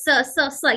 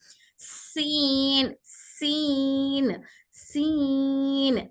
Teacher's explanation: ये हवा वाला हर्फ है हल्का सॉफ्ट और फास्ट साउंड होता है ये सॉफ्ट है मतलब इसको हैवी नहीं पढ़ेंगे लाइट लेटर है